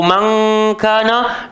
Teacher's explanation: Nun mati bertemu kaf automatik bunyi ng